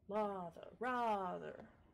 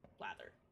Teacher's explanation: So lather and rather have a broad A, and blather, gather, and slather have a flat A.